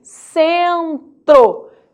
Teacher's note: em centro eu nasalizo e o motivo agora você já sabe seguido de n Centro agora que o n está dentro da mesma sílaba · Já em centro, eu nasalizo o E. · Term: nasalizado, E nasalizado